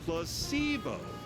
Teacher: The stress is on the middle syllable.